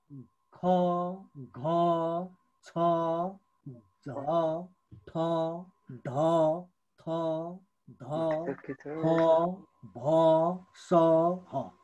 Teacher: फोक्सोबाट बाहिरिने हावा बढी मात्रामा निस्की उच्चारण हुने वर्ण चाहिँ के हो त महाप्राण हो